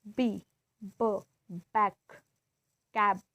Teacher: B, b, back, cab. Oral passages is blocked by closing the lips. This is also bilabial.